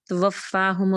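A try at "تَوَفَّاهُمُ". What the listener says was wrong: اچھا واؤ پہ نا بالکل بھی دانت آپ کے لپس کو ٹچ نہ کریں. توفاہم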